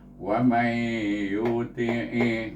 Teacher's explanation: Nun bertemu dengan huruf idgham, nun sukun. Jadi kita baca dengan idgham ma'al gunnah 2 harakat. Dapat, bunyinya wa may yuti'i.